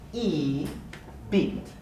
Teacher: the high front vowel e as in the word beat so e beat all right so beat is longer and tense